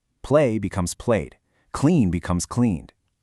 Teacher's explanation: Just let your vocal cords buzz to create that D at the very end of the word. · Well, because the base word vibrates your vocal cords, the past tense ending must also vibrate. So, the ED makes a pure D sound.